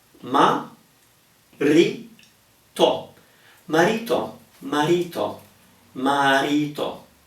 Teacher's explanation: R in the middle of a word between vowels is a mild R. It's not crazily strong